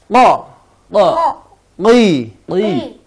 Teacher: bunyi bertemu dari pangkal lidah bertemu pangkal langit-langit atas